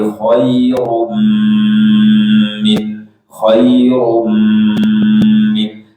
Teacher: Mim bertasydid lama gunahnya sama dengan nun bertasydid